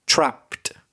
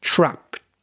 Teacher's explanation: you didn't put the extra t for the ed